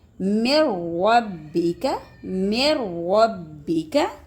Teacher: اب دیکھیں میں نے دو لفظ آپ کو بتائے تھے نا، اس میں غنہ نہیں ہوتا، تو میم نون ساکن کے بعد را آ گیا، غنہ نہیں کریں گے